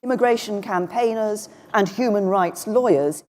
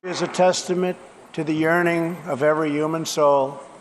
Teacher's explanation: but in New York accents the H is dropped